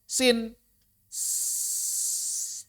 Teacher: Pertama, pita suara enggak bergetar. Kedua, enggak nyaring, nirsuara. Yang ketiga, napasnya deras. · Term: huruf hams